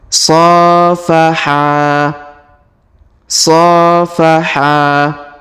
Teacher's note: huruf SH kita panjangkan dua harakat karena terdapat Alif di depannya